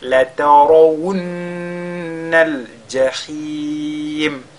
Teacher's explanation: le nun, il est mushaddada, il est donc lu avec al-ghunna